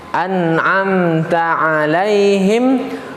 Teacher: An'amta, alaihim, hurufnya adalah ain, bukan hamzah, sehingga dibaca huruf ain, ya keluarkan dari tenggorokan tengah kita.